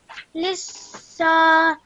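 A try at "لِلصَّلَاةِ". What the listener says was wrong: Okay, good.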